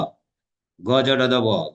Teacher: গজট দ ব যখন বলছি দেখো স্বরতন্ত্রী কম্পিত হচ্ছে একটু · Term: ঘোষ ধ্বনি